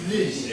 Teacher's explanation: when you say the first sound in this, your vocal cords vibrate. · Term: Voiced